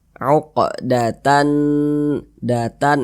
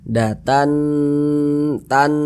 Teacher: tannya itu kita tahan kita panjangkan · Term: ghunah musyaddadah